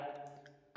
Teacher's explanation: ता जो है वह अल्पप्राण है ये पहला अक्षर होता है अल्पप्राण और दंत से बोला जाता है।